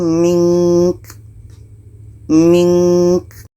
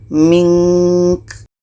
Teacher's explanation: Nun mati, ka ini pendek maka kita matikan. Jadi di sini ada 2 huruf mati, nun dengan ka. Dua-duanya kalau berhenti tetap dibaca. Contoh, wa ayatam mink.